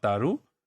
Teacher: And then in the case of t, which is unaspirated, this is unaspirated voiceless sound